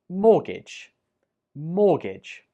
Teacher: We do not pronounce the T when we say this word out loud. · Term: silent letter